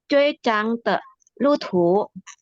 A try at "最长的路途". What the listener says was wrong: 长，nggak boleh cang. 长。 nggak boleh. 长。最长。